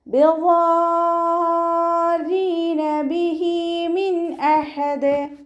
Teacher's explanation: മദ്ദക്ഷരത്തിന് ശേഷം ശ്രദ്ധയോ ഒറിജിനൽ സുക്കൂനോ വന്നു കഴിഞ്ഞാൽ നമ്മൾ 6 കൗണ്ട് നിർബന്ധമായിട്ട് നീട്ടിക്കൊടുക്കണം കേട്ടോ. മദ് ലാസിമാണ് വരുന്നത്.